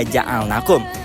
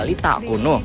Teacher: matobi'i ini dibaca panjang 2 harokat tanpa sebab tambahan seperti hamzah atau sukun